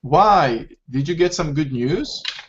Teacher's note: Because it's a yes or no question. So intonation goes up.